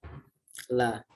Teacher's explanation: Di adnal hafah, yaitu pinggir lidah tapi di ujungnya, adnal hafah namanya. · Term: lam